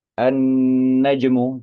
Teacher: Kondisinya adalah alif lam bertemu dengan huruf nun tapi lam ini tidak dibaca lam sukunnya itu tidak dibaca justru melebur ke huruf nun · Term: idgham syamsiyah